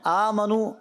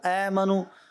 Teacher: اے زبر کھڑا زبر، اس کو لٹانا نہیں ہے، کھڑا ہی رکھنا ہے. آمنو اے منو، تو اس چیز کا آپ نے خیال رکھنا ہے.